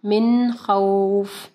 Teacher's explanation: نون ساکن کے بعد خا ہے، حروف حلقی میں سے ہے، تو یہاں پہ اظہار ہوگا، یعنی نون کو ہم لوگ کلیئر پڑھیں گے. من نہیں پڑھیں گے، من خوف.